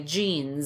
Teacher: You should feel buzzing. You should feel that voicing or the vibration in your throat when you say jeans. Z. There's a Z at the end, even though it's spelled with the letter S.